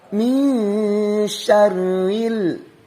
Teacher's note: nun mati di depannya ada huruf sya. Berarti ini ikhfa dibacanya. Diikhfakan, disamarkan dan didengungkan. Min syarril, ada alif lam qamariyah.